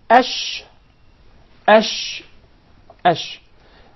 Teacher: the sheen is articulated from the middle of the tongue, and what lies opposite to it from the upper palate, or the roof of the mouth.